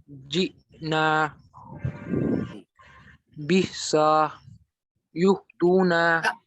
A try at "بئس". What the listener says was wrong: सा खींचना नहीं, देखो सीन पे जबर है, हरकत को नहीं खींचना। बिसा